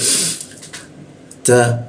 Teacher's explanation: Huruf ta posisinya ujung lidah bertemu gigi, dia ta ya, ada bocor halus seperti itu.